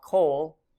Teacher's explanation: Similarly, one of our new vocab words, the word all, kol, is almost always or most often in this shortened or reduced form with a short O sound, the kametz hautuf, because it's usually saying all of something, all of the land, all of the people.